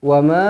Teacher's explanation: Wa ma, panjang 4 ataupun 5 harokat.